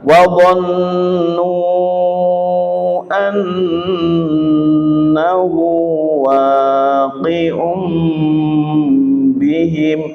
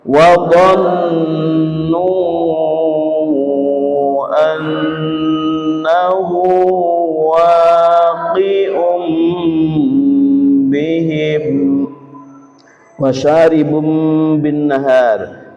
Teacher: dumah tanwin kita ketemu dengan ba dibaca suara tanwin diganti mim dengan dengung lama. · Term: iqlab